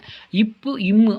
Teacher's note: இப்பு இம் ஆகிய இரு மெய்களும் மேலிதலும் கீழிதலும் பொருந்துவதால் பிறக்கின்றன